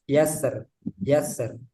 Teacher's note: kata yasri di surah Alfajr dibaca tarkik